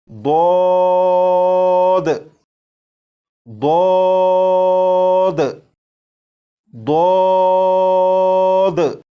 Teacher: اس حرف کو پڑھنے سے پہلے زبان کی کروٹ کو اوپر کی داڑھوں کی جڑ سے لگا لیجیے گا۔ نمبر 2، اس حرف کو جب آپ پڑھنا شروع کریں تو آواز کو موٹا کر لیجیے گا۔